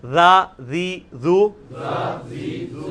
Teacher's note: ذا ذی ذو, سیٹی نہیں اس میں نرمی